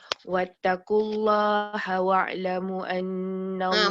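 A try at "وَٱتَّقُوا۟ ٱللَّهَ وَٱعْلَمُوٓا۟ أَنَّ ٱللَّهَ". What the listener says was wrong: Mu pun tak lama. Sekejap. Mu pun awak tak lama tu ada ombak tu. Mu dia. Mu dia panjang. Mu dia 4.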